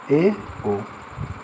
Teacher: अर्धसंवृत स्वर, इसमें मुंह थोड़ा सा खुलेगा